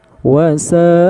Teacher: Sa'a bertemu dengan hamzah, maka hukumnya menjadi mad wajib muttasil dan dibaca sepanjang 5 harokat.